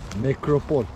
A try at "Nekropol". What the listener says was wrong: Evet, nekropol değil. Nekropol. En son söylediğin L harfini yumuşak söylüyorsun, kibar kibar. Nekropol.